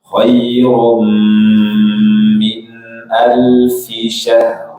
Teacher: Baik, Lailatul Qadri khairum min mim syaddada. Mim bertasydid, lama gunanya sama dengan nun bertasydid.